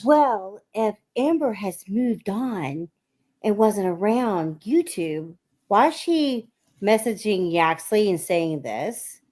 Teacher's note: she started with the silly Marilyn Monroe breathy voice, but she couldn't keep it up